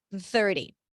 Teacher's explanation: It's almost like I'm pronouncing one long TH with a short break in between.